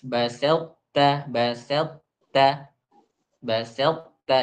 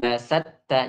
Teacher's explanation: ucapkan ta itu dengan sukun, kemudian tebal, kemudian itbaq tanpa ada qalqalah